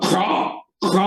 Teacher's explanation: എബ്രായ ഭാഷയിൽ ഉച്ചരിക്കുമ്പോൾ അത് ഖ എന്ന് നമ്മുടെ തൊണ്ട കൊണ്ട് പറയുന്നതായ ഒരു ശബ്ദമാണത്